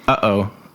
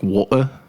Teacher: Or like in the British water, like water, like that little stop that they have. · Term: glottal stop